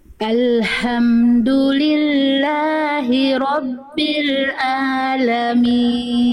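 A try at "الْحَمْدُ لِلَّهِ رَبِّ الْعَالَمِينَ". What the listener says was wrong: oke ainnya kurang kuat Bunda a a dirasakan dari tengah-tenggerokan Bunda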